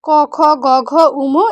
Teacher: এখন এই যে এইগুলা লিখছে, এগুলো হচ্ছে উচ্চারণের স্থান। ক বর্গীয় ধ্বনি উচ্চারণের স্থান হচ্ছে কণ্ঠ।